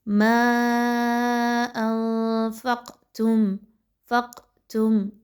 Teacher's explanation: قاف جو ہے وہ تھوڑی سی ہلا کر پڑھی جا رہی ہے۔ قاف کے اوپر چونکہ جزم کی علامت ہے اس لیے اس کی آواز کو جاری رہنے کی طرف مائل رکھا جا رہا ہے۔